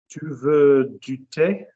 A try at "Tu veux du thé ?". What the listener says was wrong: No, you've gone back to de, haven't you? Sloppy, sloppy, sloppy. What word are you saying before tea?